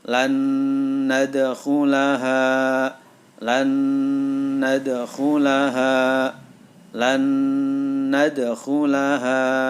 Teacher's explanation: Maka suara nun yang pertama masuk ke dalam huruf nun yang kedua. Jadi cara membacanya lan nadkhulaha, lan nadkhulaha, lan nadkhulaha. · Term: idgham bi gunnah